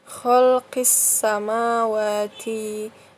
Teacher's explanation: jadi alif lam nya tidak dibaca langsung masuk ke shinya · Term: alif lam syamsiah